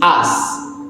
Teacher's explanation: we can hear that the pronunciation omitted the sound k at the end of the word